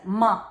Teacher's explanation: Then pa varga is oshta, lips plus nasal